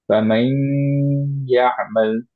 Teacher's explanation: সো ফামান এবং তারপরে ইয়ামাল, এইটার মধ্যে খেয়াল করে দেখি, নুনটা ইয়ার সাথে মার্জ হলো, কমপ্লিট মার্জ না, ইনকমপ্লিট মার্জ।